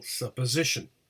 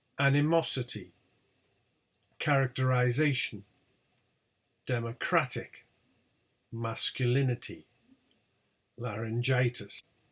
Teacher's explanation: we have secondary word stress at the beginning